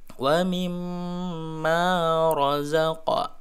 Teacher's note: Ro-nya ro tafkhim, ro dibaca tebal ya, karena ro di baris fathah